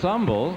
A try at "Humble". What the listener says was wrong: It's umble. The H is silent.